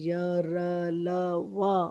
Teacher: गले पे जब हम फिंगर रखते हैं, य, र, ल, व बोलेंगे तो उसमें से साउंड आती है गले में से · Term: अंतस्थ